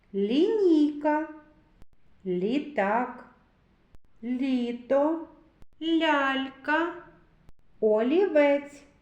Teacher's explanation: Ми чуємо звук ль він вимовляється м'яко